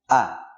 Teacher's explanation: Contoh huruf hamzah. Ia keluar dari tenggorokan bagian bawah.